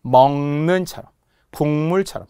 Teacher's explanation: 비음이 아닌 소리가 비음인 니은, 미음, 이응으로 발음한대요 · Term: 비음화